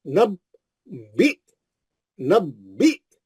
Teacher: एक बा पे तजदीद है, दो बा है। पहला बा साकिन है, नब, आप मिला लिए, पहले बा को मिला लिए। दूसरे बा का जेर पढ़ना है और झटका मारना है।